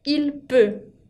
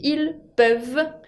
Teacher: La différence entre le singulier et le pluriel, il peut et ils peuvent, es que tengo que escuchar esa V corta para el plural para darme cuenta al oral de que me hablan de varias personas